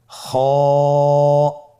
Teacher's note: খ হরফটির মাখরাজ হলো কন্ঠনালীর শেষ ভাগ হতে উচ্চারণ করতে হয়।